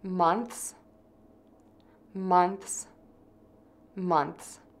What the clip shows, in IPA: mənθs